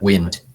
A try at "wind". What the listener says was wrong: Okay, wind ya, bukan wine, wind dibacanya. Wind.